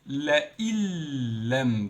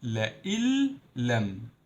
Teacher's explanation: There is no noon and it's lam directly. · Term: idgham